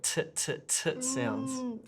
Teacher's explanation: top of the tongue is curled back over like that whereas in english we don't curl the tongue we just want it tapping the top of the roof of the mouth